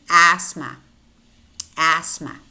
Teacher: Thumb, thumb, healthy, healthy, breath, breath, teeth, teeth. And we have a word which contains the th, but the th is silent